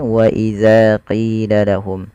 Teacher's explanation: kedua-duanya kita panjangkan dengan panjang dua harakat karena keduanya mad tabi'i. Yang pertama za panjangnya ditandai dengan adanya alif setelah huruf mad.